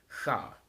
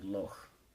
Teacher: in the Scottish dialects, there's the voiceless velar fricative